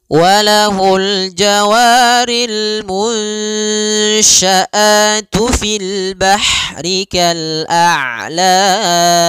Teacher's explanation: pada lafal jawari ada mad tabi'i, fathah bertemu alif, panjangnya 2 harakat